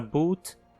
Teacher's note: o som do u longo, como na palavra boot é mais anterior que um [u] propriamente dito. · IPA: [bu̘t]